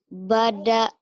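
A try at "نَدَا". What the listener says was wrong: Bada. Mana bada? Apa tuh? Titiknya di atas sayang. Nada.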